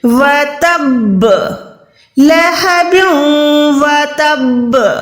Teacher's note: اس کا کیا مطلب ہوا کہ یہاں پر ساکن با یعنی 2 دفعہ ساکن کے ساتھ آ گئی. پہلے تا کے ساتھ ملائیں گے, پھر اگین با ساکنہ کو ادا کریں گے کلکلا کے ساتھ